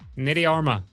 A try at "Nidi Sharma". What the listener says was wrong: I think it would be Sharma instead of Harma